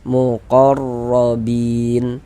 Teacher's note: huruf ra kalau dia memiliki harokat fathah, maka huruf ra dibaca tebal, dibaca tabkhim. Sehingga tebalkan pangkal lidah kita naik terangkat ke atas.